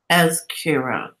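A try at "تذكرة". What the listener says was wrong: Not zay. Thou. The. The. Tedkira.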